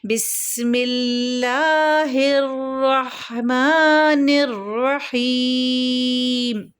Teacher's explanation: اس کے بعد وہی والی ترتیب ہے کہ میم کے نیچے ہے تو زیر، لیکن ہم میم ساکن کر رہے ہیں تو لہٰذا اس ہا یا زیر ہی کی حرکت مد عارض وقفی کی وجہ سے 4 حرکات تک ہو جائے گی